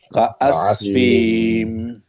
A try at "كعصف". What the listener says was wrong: না ফিতে মাদ নাই হ্যাঁ সরি আমার ভুল ছিল কা আসফিম ফিম মিমটা না ফি মাদ নাই হ্যাঁ ফিম ফিম হ্যাঁ كعصفم very good كعصفم عين عص